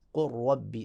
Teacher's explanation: اس طرح دوسری مثال قل ربی، قل علیحدہ تھا اور را علیحدہ، ربی علیحدہ تھا، تو لام کو را میں تبدیل کر کے لام کا را میں ادغام کر دیں گے، قل ربی، اب لام دیکھیں غائب ہو گیا، قل ربی۔